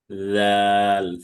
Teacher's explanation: জাল হচ্ছে জিহ্বার আগা সামনের উপরের 2 দাঁতের আগার সাথে লাগবে।